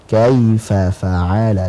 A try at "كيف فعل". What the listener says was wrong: ulangin fa-nya panjang soalnya كيف فعل coba كيف فا كيف فعل